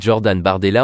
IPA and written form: ʒɔʁdan baʁdɛla (Jordan Bardella)